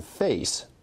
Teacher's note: starts out at [e] and ends at [ɪ] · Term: diphthong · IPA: [feɪs]